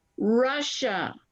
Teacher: Now, Russia doesn't have the little "ya" in it as much because of the two S's that kind of say that sh sound that we were talking about just a little while ago. Two S's together for Russia kind of has that sh sound.